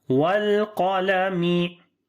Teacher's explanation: So on the lam little continue your sound, as we say wal qalami. Qaf we read in heavy sound due to isti'la letter